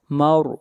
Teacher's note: را کو موٹا پڑھیں گے، را سے پہلے زبر ہے